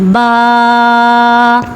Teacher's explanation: جب ہم اپنے دونوں ہونٹوں کو آپس میں ملاتے ہیں تو با ادا ہوتا ہے اور اس کو ہم 1 الف کے برابر لمبا کرتے ہیں، با۔